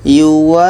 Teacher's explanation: wa ini kita panjangkan 6 harakat baru masuk ke huruf yang ada tasydid. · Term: mat lazim kilmi mutsaqqal